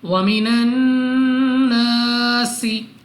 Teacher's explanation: الف سے پہلے زبر الف مدہ 2 سیکنڈ تک لمبا کرنا ہے۔ سین کو سیٹی والی آواز کے ساتھ پڑھنا ہے